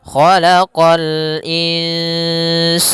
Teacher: huruf kha pangkal lidah kita terangkat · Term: isti'la